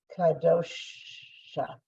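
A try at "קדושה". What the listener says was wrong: Not ka, k, just k.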